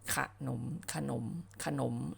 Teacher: ให้ออกเสียงกับอักษรตัวหน้าหน้าเป็นเสียงสระอะแต่ออกอะกึ่งเสียงนะคะ คืนก็ขึ้นเลยครึ่งไปนิดนึงนะคะเราไม่ต้องออกเป็นเสียงว่าขณะนี้ไม่เอานะขนมขนมขนมอาขนมเคยตึ่งเสียงและก็ให้ออก